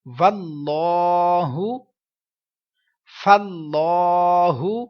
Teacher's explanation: اب یہاں پر ہم نے رول پڑھا تھا لام کا، کہ جب اللہ تعالیٰ کے لام سے پہلے زبر پیش آئے تو پر پڑھیں گے